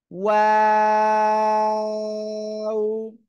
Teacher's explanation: দুই ঠোঁট গোল করবেন, তারপর আবার দুই দিকে প্রসারিত হবে, আবার দুই ঠোঁট গোল, তিন আলিফ টান হবে।